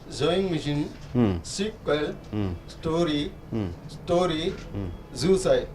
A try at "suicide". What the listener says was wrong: You stress the word, you are not stressing the word, you are just saying like usual.